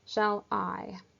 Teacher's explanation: Shall, that first syllable, in comparison to the syllable that follows it, I, is softer and quieter. Hence, I know that it's unstressed, whereas I is then stressed. · Hence, I know that it's unstressed, whereas I is then stressed. I is louder and longer than the syllable that comes before it.